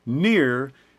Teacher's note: So most American speech is rhotic, meaning the R stays on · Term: rhoticity